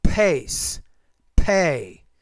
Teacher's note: when you pronounce the P, you produce it with more air